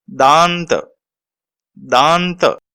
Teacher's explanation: दांत, इसमें भी आप देख रहे हैं दा के ऊपर विशेष जोर देकर बोला जा रहा है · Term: अनुस्वार